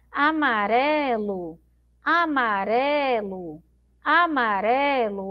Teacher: a sílaba mais forte é esse ré aqui no meio